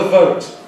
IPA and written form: vəʊt (vote)